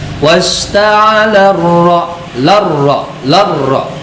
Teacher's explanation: ro-nya termasuk ro tafhim, maka benar-benar harus dibaca tebal